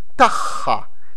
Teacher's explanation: when the two are together they're actually both pronounced as a deep h as the cut h